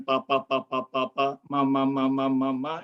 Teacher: Jadi bunyi yang memang sangat mudah karena ketika kita mengatakan papa, papa, papa, mama, mama, mama itu cukup dengan menggerakkan bibir yang namanya itu adalah bunyi bilabial